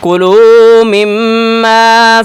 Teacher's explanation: میم کے اوپر تشدید ہے، اسے غنہ کریں، ناک میں آواز نکالیں